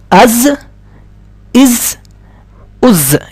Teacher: سین جیسے سیٹی کے ساتھ آواز نکلی تھی ایسے اس کی بھی زا کی جو ہے وہ بھی سیٹی کے ساتھ نکلے گی. جیسے ہم پڑھتے ہیں حمزہ زا زبر از، حمزہ زا زیر از، حمزہ زا پیش از، از از از، از از از.